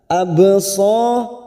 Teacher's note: ba sukun Qalqalah sugro Karena Mati asli di tengah kalimat kita pantulkan